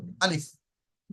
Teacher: যেমন ধরুন আমি যদি কারোর নাম ধরে বলি মুফরাদাত, এই যে টানটা দিলাম বা লম্বা করলাম, এই অক্ষরটি আলিফ অক্ষরটি উচ্চারণের সময় এইরকম কোনো প্রকারের লম্বা বা টান হবে না, মুখের ফাঁকা অংশ থেকে আওয়াজটা হবে আলিফ, একটুও টান হবে না